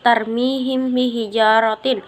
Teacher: juga membacanya disertai dengan gunnah atau dengung. Adapun contoh membacanya yaitu tarmihim bihijaratin, di mana mim mati atau sukun bertemu dengan ba.